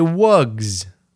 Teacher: or the voiced consonant Z preschoolers consistently choose the correct form if they presented with a wug they choose the voice consonant Z